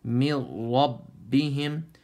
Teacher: So ميم's empty mouth, raw's full mouth. So you have to blend it from empty mouth to full mouth. من ربهم. And hold on to the ba for a moment.